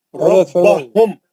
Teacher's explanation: ارے بھائی غنہ نہیں کرو، میم کا غنہ نہیں کرو